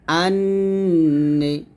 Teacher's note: আর নুনটা জিহ্বার আগাটা উপরের তালুর সঙ্গে লাগিয়ে গুণ হবে।